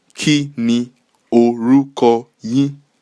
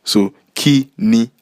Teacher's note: So for the first word, the accent marks are mi, re